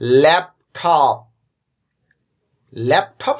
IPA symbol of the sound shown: æ